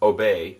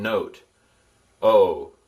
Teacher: the Omicron is like the O in obey. See, it's not held quite as long. And the Omega is like the O in note.